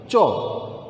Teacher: তোমার জিহ্বাটা একেবারে তালুতে গিয়ে স্পর্শ করছে। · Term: তালব্য ধ্বনি